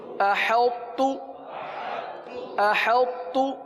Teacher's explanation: ساکن حرف کو مشدد میں ملا دیا جاتا ہے